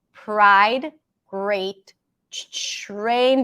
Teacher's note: TR turns into a cha sound